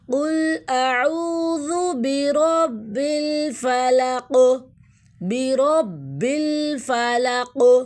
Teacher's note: میں نے اس لیے کلکلہ کیا کیونکہ قاف کو وقف کی صورت میں ہم ساکن دے رہے ہیں